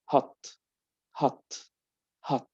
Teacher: In American, it's near from ah.